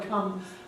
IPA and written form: kʰʌm (come)